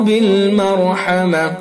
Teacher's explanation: چونکہ را ساکن اس سے پہلے میم کے اوپر زبر ہے، اس لیے را پر ہوگی